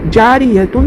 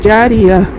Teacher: تو گول تا پر وقف کرنا ہو تو وہ ہائے ساکنہ بن جائے گی، جیسے جاریتن سے جاریہ۔